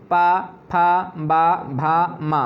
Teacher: पा, फा, बा, भा, मा, ओंठ आपके बंद होंगे।